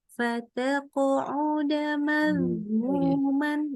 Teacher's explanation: Qafnya qalqalah kan? Ini qalqalah tuh mantul suaranya, tapi nyambung.